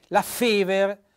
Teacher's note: la Fever con l'accento tonico sulla prima